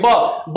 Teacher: ब बोलने में हमारा जो है ओट काम कर रहा है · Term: ओस्ट